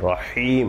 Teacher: রহিম এই শেষে তিন আলিফ টান